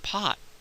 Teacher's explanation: we'll sometimes not release the air at the end of the T at all. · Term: closed off T